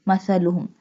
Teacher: Tha pronounced softly. Tha pronounced from the tip of the tongue touching the inner edges of the top two front teeth.